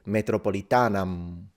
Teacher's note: do not pronounce the M if you don't want to sound like a barbarian, which means fully nasalize it, Metropolitanam, which makes it sound like Italian, Metropolitana.